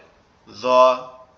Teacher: জ অক্ষরটা হচ্ছে আমাদের জিহ্বার আগা সামনের উপরের দুই দাঁতের আগার সঙ্গে লাগবে, লেগে উচ্চারিত হবে জ।